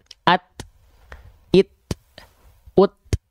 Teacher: kalau huruf ta kita lafalkan dalam kondisi sukun, dia itu tertahan dulu. At baru yang keluar. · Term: syiddah